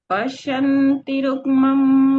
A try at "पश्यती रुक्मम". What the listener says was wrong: सही है बस जो आप खींच रहे हो आपने पश्यती रुक्मम तो खींचना कभी लास्ट लाइन में नहीं होता